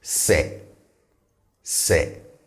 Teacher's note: the se is on the lower side in terms of tone